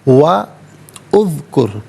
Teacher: واو پر زبر ہے، اسے اذکر کی زال ساکن کے ساتھ ملائیں گے، درمیان میں سے الف یعنی حمزہ کو حذف کیا جائے گا